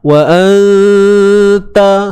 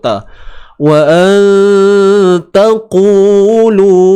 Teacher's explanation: Nak dengung tu tebal ke nipis? Nipis tuan-puan. Nipis je ada dengung.